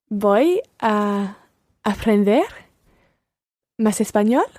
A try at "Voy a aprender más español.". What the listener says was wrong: Muy bien.